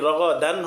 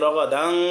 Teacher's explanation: তানবিনকে গুন্না সারা স্পষ্ট করে পড়তে হবে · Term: ইজহার